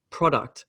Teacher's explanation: pro gets the emphasis and duct gets the smaller emphasis